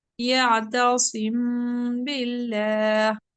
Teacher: میم اور با جو ہے دونوں ہونٹوں سے ادا ہوتے ہیں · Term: غنہ